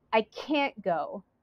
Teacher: Oh no, I'm sorry, I can't go. Here that negative can't gets the stress. Go does not have the stress.